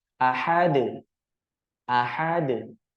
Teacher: Nah, selanjutnya pada huruf dal yang diwakafkan, yang di akhir ayat itu pada kalimat ahad. Karena huruf dal merupakan huruf qalqalah, maka ketika dia sukun atau diwakafkan ketika berada di akhir kalimat, mesti dipantulkan bunyinya